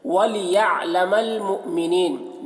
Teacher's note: وَلِيَعْلَمَ الْمُؤْمِنِينَ یہاں پر حمزہ ساکنہ ہے، واو کے اوپر حمزہ ہے تو یہ حمزہ کے اوپر جزم ہے، تو حمزہ ساکنہ ہے، اس کو پڑھنے میں جھٹکا لگتا ہے